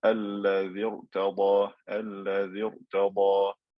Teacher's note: the condition of the kasra being original is not fulfilled, so the ra is going to be mufakham.